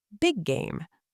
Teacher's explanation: Big game, the 2 Gs merge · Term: same sound linking